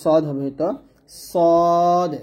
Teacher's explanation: স্বাভাবিকের তুলনায় অপেক্ষাকৃত ভারী ও ভরাট গলায় এবং ঠোঁট কিছুটা গোল করে পড়া হয় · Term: মোটা উচ্চারণ